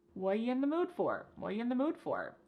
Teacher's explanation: The word are is gone. And the word you has been reduced to y. So when we link together what and you, it's super fast.